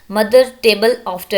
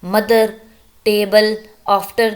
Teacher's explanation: द first part of द word is stress